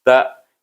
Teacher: Sebab kalimah ta ini bunyinya ta tetapi dia digabungkan dengan hamzah yang mati. Jadi bunyinya tak daripada depan mulut kita dekat atas gusi gigi kacip kita, kemudian pergi kepada huruf hamzah iaitu pangkal halqum.